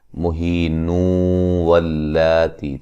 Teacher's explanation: یہاں نون تنوین کا ادغام مع الغنہ ہوگا